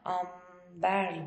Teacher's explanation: buradaki n sesinin m'ye dönüştüğünü görüyoruz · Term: Dudak ünsüzlerinin benzeşmesi